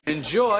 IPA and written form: ɪnˈdʒɔɪ (ENJOY)